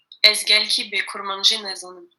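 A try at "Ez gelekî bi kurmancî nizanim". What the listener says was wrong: Alors, pas mal du tout, mais on travaille encore sur bi. On ne dit pas bi, on dit b.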